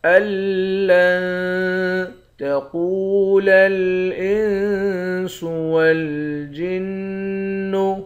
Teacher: قاف کو موٹا پڑھیں گے، واو کے ساتھ ملا کر ایک الف کی مقدار کھینچیں گے